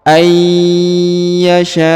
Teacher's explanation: Ya nun sukun bertemu ya Mak maka dia ditahan dan ditekan dan huruf nunnya menghilang atau melebur ke huruf ya · Ya ditahan dan ditekan ya dua harakat ayyasya Allah ya perhatikan huruf s dipanjangkan lima harakat ya karena